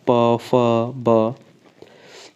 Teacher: इन अक्षरों के उच्चारण में दोनों ओठों का प्रयोग होता है। द्व ओष्ठ माने 2 ओठों का प्रयोग होता है, दोनों ओठों का।